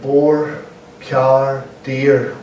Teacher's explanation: We pronounce our R's, where in most of England they don't. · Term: rhotic language